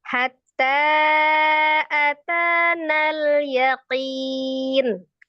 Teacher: Jadi maka dibacanya tetap atanal. Jadi bukan dipanjangkan nal.